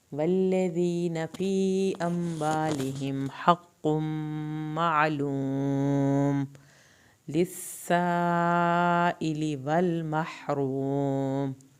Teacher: सीन की शद पे देर लगानी है, मध्य वाजिब को 3 अलिफ के बराबर लंबा करना है. इली, यहाँ पर ये दोनों को ज़्यादा नहीं खींचना.